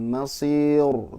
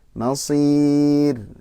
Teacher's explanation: paling di ra sukun setelah kasroh itu tipis Pak ya. Wa bi'sal masir, bukan masir tapi masir.